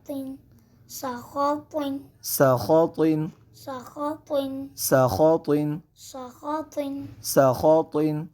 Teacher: ہم سین کو باریک پڑھیں گے اور سیٹی کے ساتھ ادا کریں گے جبکہ خا اور طا ان دونوں حروف کو ہم پر پڑھیں گے کیونکہ یہ دونوں حروف مستعلیہ میں سے ہے اس لیے ان دونوں حروف کو پر پڑھا جائے گا.